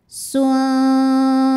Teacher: Sebab ada nun sukun bertemu dengan huruf dal. Cara bacanya nun disamarkan ke dal disertai dengung. Ujung lidah mau ditempel ke pangkal gigi seri atas, makhraj huruf dal. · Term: ikhfa hakiki aqrab